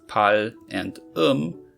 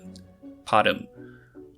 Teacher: ㄹ is pronounced as /l/ in coda position, but /r/ in the onset